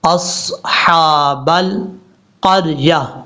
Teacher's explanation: حمزہ کے بعد جو صاد ہے یہ صاد حروف مستعلیہ میں سے ہے، پر پڑھا جائے گا ، صاد کے بعد جو ہا ہے یہ ہا بریک پڑھیں